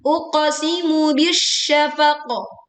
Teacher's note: Kadar pantulannya setengah harokat ya. Hati-hati tidak sampai 1 harokat. · Leburkan alif lam ke shin sehingga langsung ditekan ke huruf shin. Dan kita berwaqaf di huruf qaf sukun karena waqaf dibaca dengan pantulan yang jelas dan kuat.